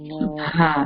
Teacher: The ha comes from the bottom of the throat.